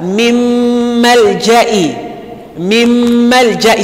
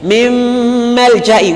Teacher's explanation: So Nun coming before Mim. And we are going to pronounce it as though we are having mim that is having shadda, but we are adding nasalization. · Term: assimilation with nasalization